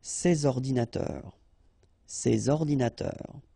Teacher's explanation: All right, and of course les adjectifs démonstratifs, sorry, this or these, okay, and in that case I took the plural form, so these here, and then ordinateur, computers, so you should make the liaison between S and O